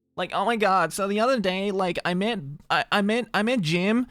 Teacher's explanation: If we're talking like linguistics terms, it's the vocal fry. It's the it's this kind of voice.